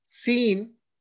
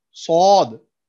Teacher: Sin, thin and whistle sound. Sod, thick and whistle sound.